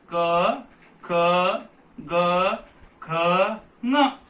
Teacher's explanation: ಅವೆಲ್ಲವೂ ಆ ಕಂಠದಿಂದ ಹುಟ್ಟುತ್ತವೆ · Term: ಕಂಠ್ಯ